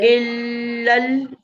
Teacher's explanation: फिर लाम को लाम से मिलाएंगे, इसमें हमजातुल वसल ड्रॉप हो जाएगी · चलो, हमजा के नीचे कसरा है और लाम मुशद्दद है, तो हमजा को लाम से मिलाएंगे, और इसमें 2 लाम है, तो जल्दी नहीं इसको मुशद्दद के साथ और जमाव के साथ पढ़ेंगे ना